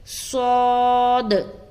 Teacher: صفیریہ والی صفت اس میں بھی پائی جاتی ہے، لیکن ہمیں اس میں استعلاء کا خاص خیال رکھنا ہے، یعنی کہ موٹے پن والی جو صفت ہے اس کا خاص خیال رکھنا ہے۔ صفیریہ والی جو صفت ہے وہ ذرا کم محسوس ہوتا ہے اس میں، اور استعلاء والی جو صفت ہے وہ زیادہ ظاہر ہوتا ہے